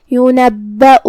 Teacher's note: پھر حمزہ ہے واو پہ، لہذا ہم حمزہ کو ظاہر کریں گے۔ حمزہ کی ادائیگی حلق کے نیچے والے حصے سے ہے